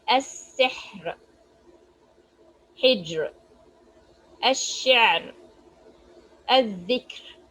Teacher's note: Ra is pronounced with an empty mouth, light in 4 cases here also if the ra is sakin or sakin because of stopping, and the previous letter is sakin and the letter preceding the sakin letter has kasra.